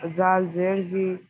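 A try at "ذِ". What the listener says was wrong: जाल नहीं है, जा है। जा नहीं जा सख्ती के साथ निकालिए। जा जेर जी, जा नहीं बोलेंगे, वो तो दाल की मखरज है। जा, दोनों दांत से दांत मिला करके सख्ती से निकालेंगे, जा।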